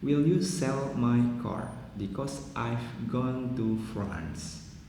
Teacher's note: In the sentence above, the four keywords like sell, car, gone, and France are the content words and are all stressed